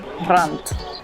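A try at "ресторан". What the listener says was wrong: Yeah, but we don't have the T at the end.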